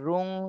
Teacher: তানবিনের পরে ইকফার হরফ, এজন্য রুং, এখানে ইকফা গুন্না করতে হবে